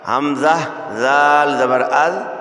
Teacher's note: یہ ذال ہے، زبان کا سرا اوپر کے دانتوں کے اندرونی کنارے سے ادا ہوتا ہے